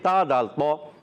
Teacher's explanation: تا کا مخرج زبان کا سرا اوپر کے دانتوں کی جڑوں سے